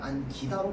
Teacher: 그래서 어미의 첫소리인 애가 된 소리가 되는 거야. 그렇기 때문에 얘는 접사에 해당해서 안끼다가 아니라 안기다로 발음되는 겁니다